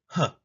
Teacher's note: now we end off our consonants with the glottal fricative huh sound